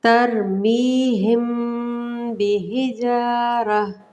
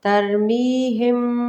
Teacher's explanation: ہونٹوں کو ملا کر غنے سے ہم پڑھیں گے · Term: اخفا